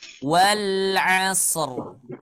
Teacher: Waw makhrajnya ada di asy-syafatain. Ya. Asy-syafatain adalah kedua bibir. Nah, berarti ketika kita mengucapkan huruf waw tanpa gerak bibirnya, nah itu berarti ada yang salah di sana.